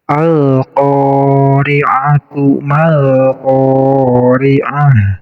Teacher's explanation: Hukumnya izhar, maka cara membacanya harus terbaca lamnya. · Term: alif lam qamariyah